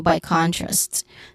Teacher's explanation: by has an I diphthong sound. Contrast, con is stressed, and then yeah, contrast.